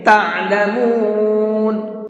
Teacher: عین کو حلق سے نکال کر کے پڑھیں گے، تعلمون نہیں پڑھیں گے اس کو، بلکہ تعلمون۔